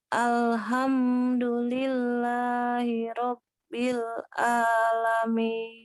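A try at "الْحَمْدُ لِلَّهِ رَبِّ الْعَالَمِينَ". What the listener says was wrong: Nah, hati-hati di hamnya. Di ham hati-hati terlalu lama. Alhamdu.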